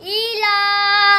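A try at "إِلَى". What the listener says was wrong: ई खड़ी जेर को लंबा क्यों नहीं किया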